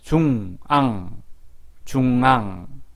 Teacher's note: 받침 기역, 악과 받침 이응, 앙은 소리나는 곳이 그림의 3번 부분입니다. 앙은 콧소리, 비음이라고 하죠. 콧소리도 같이 납니다. 콧소리는 콧구멍에서 바람이 나와야 합니다.